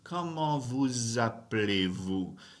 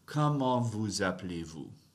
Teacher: But because that ends in a consonant and the next word starts with a vowel, I'm doing liaison and making a zzz sound right there.